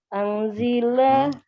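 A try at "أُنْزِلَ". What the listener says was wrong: ungzila. Kalau pasif pasti domah awalnya.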